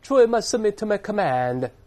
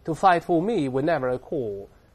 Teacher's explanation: 这个英式发音它没有卷舌音